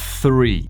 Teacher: Three se pronuncia así con la lengua por los dientes, haciendo un sonido de la S.